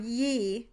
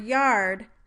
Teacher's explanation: in the word ye, the tongue body barely moves between the consonant and the vowel, but in the word yard, there is a great deal of movement of the articulators from the first consonant to the position for the vowel